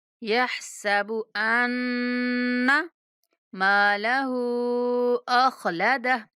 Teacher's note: ہا کو 3 سے 4 الف تک کھینچیں گے